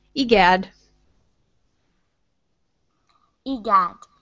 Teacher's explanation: E and then gad will be your strong one there.